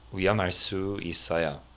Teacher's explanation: Now, here you'll see the form 위험, pronounced, the H kind of gets left out a little bit